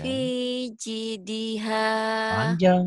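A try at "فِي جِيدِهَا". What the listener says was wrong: panjang jinnya panjang panjang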